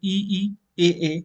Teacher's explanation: जीभ का जो आगे वाला भाग है, अगर का मतलब आगे होता है, याद है ना, अगर का मतलब आगे होता है, जीभ का आगे वाला भाग क्या हो रहा है, ऊपर नीचे हो रहा है। जैसे ई, ए, अगर आप बोलोगे तो आपकी जीभ का आगे वाला भाग जो है वो ऊपर नीचे हो रहा होगा। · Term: अग्रस्वर